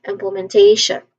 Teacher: We are familiar with that. So we emphasize on te, the one with diphthong. So we say it as implementation.